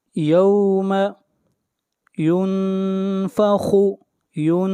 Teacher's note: یہاں پر اخفا ہو رہا ہے، آواز ناک میں جائے گی